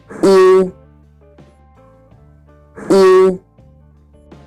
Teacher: spread your lips and say E. Then slowly round your lips. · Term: dotted U